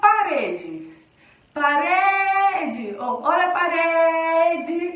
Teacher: Em parede, a sílaba tônica é o re.